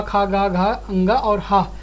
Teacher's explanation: कवर्ग और हा और विसर्ग का उच्चारण स्थान क्या है? कंठ है।